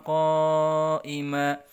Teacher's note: Ya, bagi yang belum tahu mat tabii itu adalah kalau ada fathah ketemu alif, kemudian kasroh ketemu ya, kemudian domah ketemu wawu, ya itu adalah mat wajib, mat tabii dibaca panjang ya. Nah, kalau dia bertemu dengan hamzah di dalam satu kata seperti qaima, maka dibacanya wajib 5 harokat, disebut mat wajib muttasil.